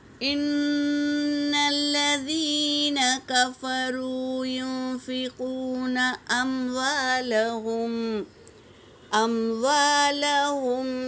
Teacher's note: نون ساکن کے بعد اخفا کے 15 حرفوں میں سے فا آیا ہے، تو یہاں پر اخفا ہوگا۔